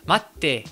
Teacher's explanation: Huitième erreur, c'est le fait d'oublier le petit tsu, et ça va donc poser un problème de rythme, parce que ce petit tsu, il marque vraiment une pause dans le mot